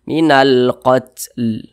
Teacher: Huruf lam ini kita berwakaf atau berhenti tepat di huruf lam. Huruf lam tidak dibaca panjang. Sehingganya ketika kita membaca Al-Quran kemudian kita berwakaf atau berhenti tepat di huruf yang tidak dibaca panjang, maka huruf tersebut harus kita sukunkan, harus kita matikan.